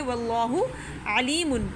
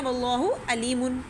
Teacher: عین نہیں پڑھتے، حمزہ پڑھ دیتے ہیں